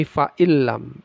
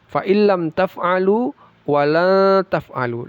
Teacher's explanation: Tidak dibaca fain lam tapi faillam. Idgham bila ghunah. Dimasukkan tapi tidak didengungkan.